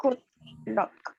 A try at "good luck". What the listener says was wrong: Acuérdense de la Pizza Hut. Esa misma U. So Pizza Hut. Good luck. So guys, you in English, it's not pronounced like the U in Spanish. It's only So that's how you pronounce it, guys. That's the way you pronounce those things.